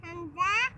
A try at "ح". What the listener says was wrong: نہیں یہ ہا ہے. نہیں واو ہا.